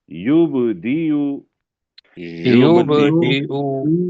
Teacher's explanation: با کے اوپر کلکلا ہوگا، اور یہ جو ہے اس کو موٹا، اس کو لمبا نہیں کریں گے کیونکہ حمزہ آ رہا ہے اور اس کے اوپر پیش ہے.